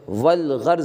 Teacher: الف کا تلفظ نہیں ہوگا، البتہ لام کا تلفظ ہوگا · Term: حروف قمری